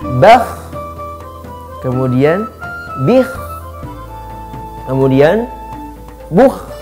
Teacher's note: Harus terdengar seperti orang yang mendengkur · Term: huruf kha